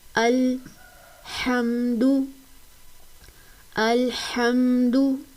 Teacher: ह की अदायगी हलक के दरमियान वाले हिस्से से होती है। जिसे वस्ते हलक कहा जाता है।